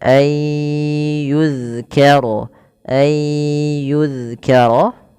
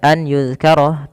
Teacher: Yaitu cara membacanya memasukkan nunnya kepada huruf setelahnya dan huruf setelahnya menjadi tasydid atau dua huruf. Maka ayyu kemudian ditahan dengan ghunah sepanjang dua harakat.